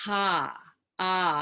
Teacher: A soft a is ah, and a little h at the beginning